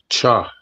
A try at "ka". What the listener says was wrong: Okay, so this one you're seeing the CH, but this one will be pronounced like ka.